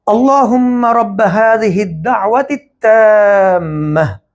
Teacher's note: یہاں پہ وقف کی صورت میں یہ جو تا ہے یہ ہا میں چینج ہو جائے گا۔ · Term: تا مربوط